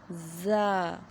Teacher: زبان کی نوک جب اوپر نیچے کے سامنے والے دانتوں کے اندرونی کنارے سے لگے تو ادا ہوتا ہے زا